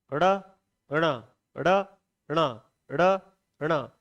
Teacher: इसे बोलते हैं ड़, इसे बोलते हैं ण। ड़ के साथ में वायु को नाक से निकालना है। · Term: ऋ का अनुनासिक उच्चारण